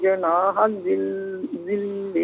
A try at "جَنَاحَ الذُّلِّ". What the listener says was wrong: جناح الذل، نہیں جنا نہیں ہے، جیم پر زبر ہے، جناح الذل،